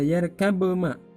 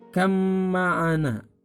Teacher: ba-nya hilang, qalqalahnya masuk pada huruf mim. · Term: idgham mutajanisain